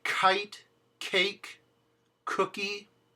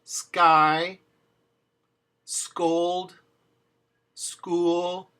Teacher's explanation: In English we say kite, cake, cookie. In Spanish there's no puff of air behind it.